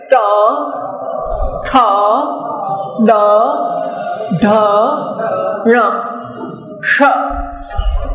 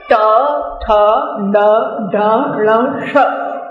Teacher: અને અંદર છે કડકે તો ગળું કહેવાય, એની વચ્ચે કંઠ્ય, એની વચ્ચે ગળું અને તાળવું એ બેની વચ્ચેની જગ્યા, એનું નામ મૂર્ધા છે. અને મૂર્ધાને અડકે એમ કે ટ ઠ ડ ઢ ણ, એ જરા બોલી જુઓ અત્યારે. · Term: મૂર્ધન્ય